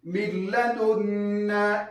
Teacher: ادغام بغیر غنه کله چې نون ساکن راغی او تنوین راغی، له هغه وروسته چې لام را راغی. لام را هلته به تاسو ادغام کوئ بې له غنې، غنه به نه پکې کوئ. د ادغام بغیر غنه هغه ادغام چې غنه پکې نه وي هغه دوه حرفه لري، د لام او د را، د لام او د را، اللام والراء.